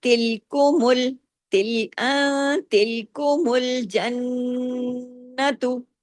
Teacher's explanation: پھر دیکھیں تلکمل یہ جو نون ساکن کے بعد تا آیا نا تو اخفا حقیقی جو آواز تھوڑی ناک میں رہی تھوڑی باہر رہی اور تھوڑا چھوٹا غنہ بھی ہوا. یہ جو ہے نون کی آواز جو ناک میں گئی نا اس کو غنہ کہتے ہیں نا.